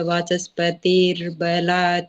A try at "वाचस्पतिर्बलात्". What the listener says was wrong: हाँ जी, वाचस्पतिर बला, बस उसको थोड़ा लंबा कर दे, बाकी ठीक है।